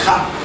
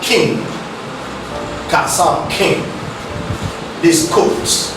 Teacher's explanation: To produce this sound, while the back of the tongue makes contact with the velar, that is the soft palate, this contact results in a total obstruction of the flow of air. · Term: car sound